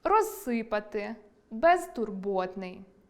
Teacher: кінцевий приголосний -з у префіксах роз- і без- може оглушуватися під час вимови